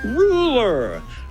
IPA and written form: ˈruː.lə (Ruler)